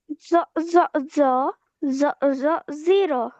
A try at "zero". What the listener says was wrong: একটু মোটা হয়েছে না? ভুল হয়েছে। জ জ জ